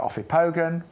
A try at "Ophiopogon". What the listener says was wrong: I love how you add extra syllables into things.